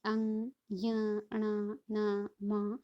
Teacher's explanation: इनके उच्चारण में जो वायु है वो नाक और मुंह दोनों से ही निकलती है, इसलिए इन्हें नासिक्य भी कहते हैं और पंचमाक्षर भी कहते हैं, ठीक है।